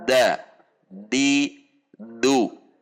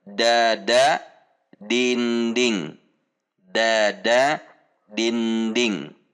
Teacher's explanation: Dia tidak menekan atau tidak menempel pada belakang gigi seri atas. Sementara huruf dal sama dengan huruf ta, yaitu pada pangkal gusi gigi seri atas. Sehingga ada yang menempel pada belakang gigi seri atas.